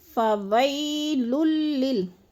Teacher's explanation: علی طعام المسکین، فویل للمصلین، وی پہ جو ہے یالین ہے، یا ساکن سے پہلے واو کے اوپر زبر ہے تو یالین کو لمبا بھی نہیں کرنا اور جھٹکا بھی نہیں دینا، آرام سے ادا کرنا ہے